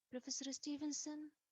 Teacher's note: i used rising intonation i sound uncertain maybe hesitant